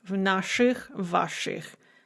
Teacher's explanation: we write ich, we say shich because of the hard sh